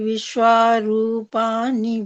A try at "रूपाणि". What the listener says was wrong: ठीक है, वैसे रूपाणी, रूपानी नहीं, अण अण बोलना है। रूपाणी, अण, हाँ, डठ डढण, रूपाणी।